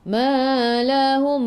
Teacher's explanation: Ma lahum, 2 harakat, ada alif mad asli. Lahum, mim bertemu dengan mim idgham mislain, masuk ke dalam mim yang kedua dan dengung 2 harakat.